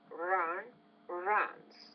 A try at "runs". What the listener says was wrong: Now with the S after the voice consonant, runs. It's more of a Z, not an S.